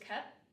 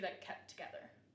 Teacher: I would say it kept with the T at the end, but some people in Appalachia might say just kept without the T. And this happens a lot when there is a consonant that comes after the consonant cluster. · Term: consonant cluster reductions